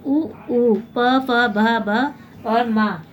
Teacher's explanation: जिन वर्णों का उच्चारण जो है ओठ की सहायता से किया जाता है उसे क्या बोलते हैं? ओष्ठ्य वर्ण कहते हैं।